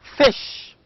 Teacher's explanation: fish begins with fricative and also ends in sh, again fricative. These two sounds are voiceless sounds.